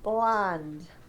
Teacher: you're doing an r it needs to be an l so your tongue needs to come to your teeth